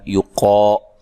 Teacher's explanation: قاف کو موٹا ادا کرنا ہے، الف مدہ ہے.